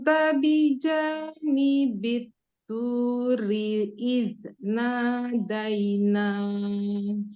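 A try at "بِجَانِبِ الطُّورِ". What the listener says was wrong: Ngomong-ngomong itu huruf poknya berubah jadi ta itu bituri. Itu ta itu. Lebih naik pangkal lidahnya. Bijani bil puri. Bil tu, bukan bitu. Ini emang agak susah yang ini. Soalnya dia mulai dari kasroh.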